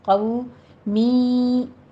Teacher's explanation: लिक़ौमिन में क़ौफ को पुर पढ़ते हुए आगे वाउलीन अदा करेंगे, होंठों को नातमाम गोल कीजिए। लिक़ौ कौमिन नहीं कहना, क़ौ मी।